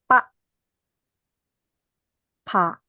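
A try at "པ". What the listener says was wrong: No, it's high tone.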